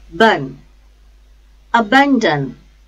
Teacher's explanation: Ban, second syllable, and dan, last syllable. The stress is on second syllable.